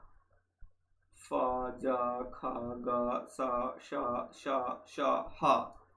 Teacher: इसमें रगड़ खाती हुई हवा निकलती है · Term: संघर्षी व्यंजन